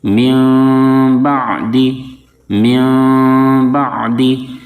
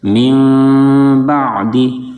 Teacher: اچانک سے دونوں ہونٹ آپس میں نہیں مل جائیں گے، بلکہ اخفا کرتے ہوئے آہستہ آہستہ ہونٹ ملائیں گے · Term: اقلاب